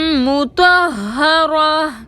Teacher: تو حروف مستعلیہ میں سے ہے، موٹا پڑھیں گے، ہا مشدد کو 2 بار پڑھیں گے، گول تا کو وقف کی صورت میں ہائے ساکنہ سے بدل دیں گے۔